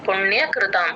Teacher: అణని tongue twist చేసి అప్ప upper జాకి touch చేయాలి